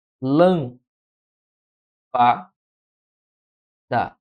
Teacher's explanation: em lâmpada eu tenho a sílaba mais forte ocupando a antepenúltima posição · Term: proparoxítona